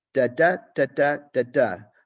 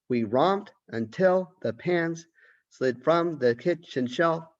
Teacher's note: See, so it's got a very, almost like a nursery rhyme, a kind of a childlike uh, pattern, rhythm. And we have this kind of iambic meter. Da, da, da, da, da, da. Unstressed, stressed syllables.